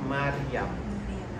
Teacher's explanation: Jadi ra tidak bergetar dan naik ke atas. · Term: bacaan biasa